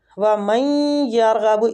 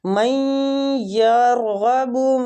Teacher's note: نون ساکنہ کے بعد یا آ رہا ہے تو ہم ادھر ادغام کے ساتھ غنہ کریں گے